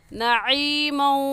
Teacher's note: عین حلق کے درمیانی حصے سے نکلتا ہے